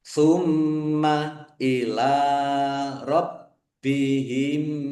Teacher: Mim tasdid dibaca ghunah atau mendengung ditahan biar tampak mendengungnya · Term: gunnah